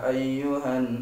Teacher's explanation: Jadi kalau misalnya surat An-Nisa ayat pertama, ketika baca tartil itu bacanya langsung ya ayyuhan, langsung kebayang ya, itu ada mat bertemu dengan hamzah di lain kalimat, berarti mad jaiz.